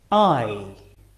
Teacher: So our mouths start wide open and closes as we say the sound. I. Starting on the R and finishing on the E.